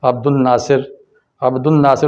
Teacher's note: نون پر آپ شد پڑھتے ہیں، لام کو سائلنٹ کر دیتے ہیں